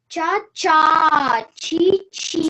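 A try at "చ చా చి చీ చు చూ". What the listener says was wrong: No, don't give stress. Cha, chi, chi, chu, choo. Don't give stress. There is another cha. Don't give stress. No, don't give stress. Say lightly without any stress.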